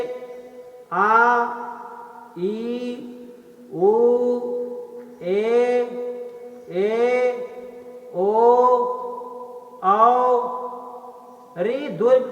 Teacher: अ, ई, उ ह्रस्व स्वर है। दीर्घ स्वर में उच्चारण में दो मात्राओं का समय